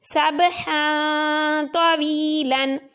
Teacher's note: 2 زبر کے بعد تو ہے تو غنہ کر کے پڑھا